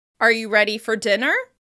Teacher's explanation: The rise in pitch at the end lets the other person know that you're checking with them and you need them to confirm with a yes or no. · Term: rising intonation